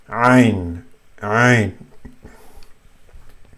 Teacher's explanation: So ain is from the middle of the throat, and you use your throat muscles to say it.